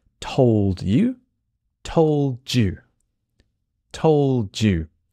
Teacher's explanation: often when a Dy sound connects it becomes the letter j